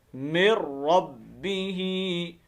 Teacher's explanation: اب دیکھیں میم کو ڈائریکٹ ہم نے را کے ساتھ ملانا ہے، ٹھیک ہے۔ یہ نون ساکن کے بعد جب لام اور را آ جائے نا تو اس وقت یہ قاعدہ ہے، وہاں پر ادغام ہوتا ہے بلا غنہ، غننے کے بغیر